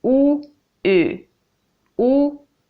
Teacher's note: tongue is moving so when I say the back vowel ooh my tongue is towards the back and then I move it to the front